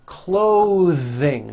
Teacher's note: voiced th sounds in the middle of words clothing notice how my tongue comes out in the middle of the word and the th sound is pushed Out